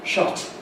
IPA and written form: ʃʌt (shut)